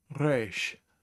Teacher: You make the reish by gargling in the back of your throat. It's a throat sound.